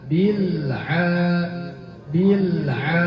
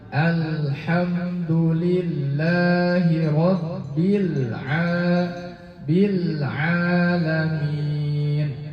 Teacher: Karena baru masuk makhraj huruf lamnya langsung dilepas. Tidak disempurnakan sifat tawasul atau bainiahnya. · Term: mantul